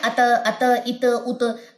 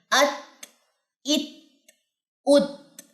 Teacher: اگر آپ اس کو پڑھیں نا، ات، ات، ات، ات، تو وہ تا پہ کلکلے ہونے کے چانسز زیادہ، کیونکہ ہمس کا مطلب ہوتا ہے جاری ہونا سانس کا. تا پہ حروف محموسہ میں سے تا پہ آپ کی سانس جاری ہوگی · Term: ہمس کی صفت